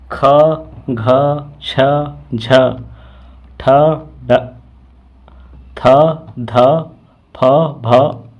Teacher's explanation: महाप्राण व्यंजनों के उच्चारण में हकार जैसी ध्वनि विशेष रूप से रहती है और श्वास अधिक मात्रा में निकलती है, यानी कि महाप्राण में ज़्यादा सांस निकलती है और अल्पप्राण में कम सांस निकलती है। · अल्पप्राण वर्णों की अपेक्षा महाप्राणों में वायु का उपयोग अधिक श्रमपूर्ण पड़ता है